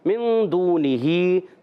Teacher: نون کو چھپائیں گے، ایک الف کا غنہ کریں گے